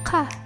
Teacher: And as we see in the picture, it pronounced with the tongue low in the mouth, and it is pronounced farther back in the throat at the very back of the tongue.